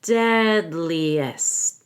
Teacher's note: I will stop after the DN dead and then I say Lee with a long e deadliest now I don't have to say the T because we